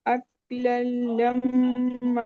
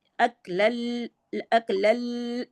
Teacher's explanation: मीम मुशद्दद पे गुन्ना करना है, लाम पे गुन्ना नहीं करना